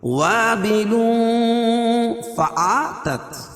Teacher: تنوین کے بعد حروف اخفا کے 15 حرفوں میں سے فا ہے، تو یہاں ناک میں آواز کو چھپا کر پڑھیں گے